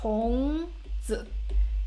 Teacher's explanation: we can hear a clear neutral tone right it's super short